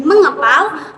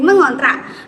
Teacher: bunyi k mengalami perubahan menjadi ng. Hal ini terjadi karena keduanya berada pada daerah artikulasi yang sama. yaitu dorselar. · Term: peluluhan bunyi